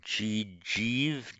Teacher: You can make a desiderative form with a reduplication of the first syllable, and instead of the ending ati, it's ishati. So it's you reduplicate the syllable, not with a long e, but with a short e. So ji, it becomes jijiv, then ishati.